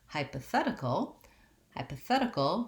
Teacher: shorter and reduced hypothesis then when we change to hypothetical hypothetical we have a different stress pattern which is that the third syllable the fat syllable is stressed